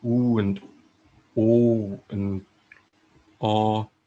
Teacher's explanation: sounds like ooh and o and ah are towards the back